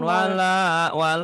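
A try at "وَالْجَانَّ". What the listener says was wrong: wala tapi wal jana bukan wala.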